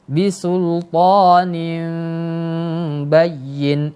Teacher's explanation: Iklab artinya merubah huruf nun itu ke huruf ba. Nah, namanya iklab, yang memalingkan, merubah.